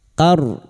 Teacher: Huruf ro yang dibaca waqaf karena kita memilih waqaf di sini maka ro kita baca tafkim. Ro yang dibaca waqaf dan didahului fathah.